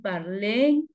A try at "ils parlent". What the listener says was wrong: Oui, parle. ENT no se pronuncia. Ok, al final aquí ENT, igual que los primeros.